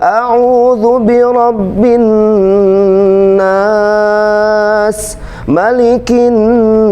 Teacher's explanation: nada yang pertama naik nada yang kedua datar nada yang ketiga turun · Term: Lagam Bayati, lagam bayati